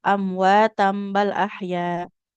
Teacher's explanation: Di sini kan ada tanda mim kecilnya ya. Nah, kan kalau kita wasol atau dilanjut jadi iqlab ya.